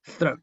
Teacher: Sonido que es dental, va la lengua entre los dientes.